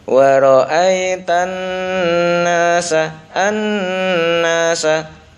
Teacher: Ini ada ghunah Nun bertasdid maka ditahan dulu